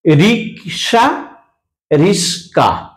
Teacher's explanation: দুটো ব্যঞ্জন ধ্বনির মধ্যস্থিত ব্যঞ্জন ধ্বনির স্থান পরিবর্তন করছে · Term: ধ্বনি বিপর্যয়